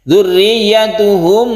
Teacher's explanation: mim bertemu dengan ba, ini kita sebut dengan ikhfa syafawi, ini kita dengungkan, kita panjangkan kalau mim bertemu dengan ba